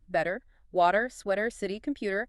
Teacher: Focus on that quick, light D sound tap. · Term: flap T